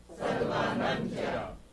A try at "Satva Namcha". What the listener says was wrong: 不 可 以 不 可 以 加 重 语 气 你 不 能 念 哈 ▁Satva ▁Namcha ▁Satva ▁Namcha 不 可 以 哈 ， 萨 德 巴 ， 萨 德 巴 拉 姆 贾 ， 萨 德 巴 拉 姆 贾 ， 有 你 不 可 以 ， 有 些 字 不 可 以 自 己 加 重 语 气 念 啊 。